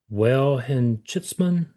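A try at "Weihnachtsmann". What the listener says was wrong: Vine. W is pronounced like a V. Yeah, Vine and Noxman.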